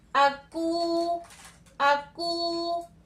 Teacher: तो यहाँ वाव मद्दा हो रहा है, तो इसको हम कितना लंबा करेंगे, 1 अलिफ की मिकदार